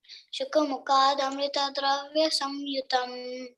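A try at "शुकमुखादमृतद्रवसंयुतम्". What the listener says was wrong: It's drava, okay? There's no dravya there, okay?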